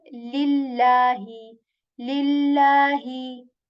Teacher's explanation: the lam of Allah's name has this kasra before it, so we will then make the Allah's name sound light